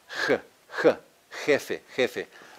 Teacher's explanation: like an aspiration an aspiration it's breathy like the English H